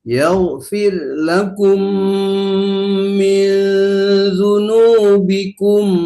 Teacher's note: Yaghfir, rohnya tipiskan dikit lagi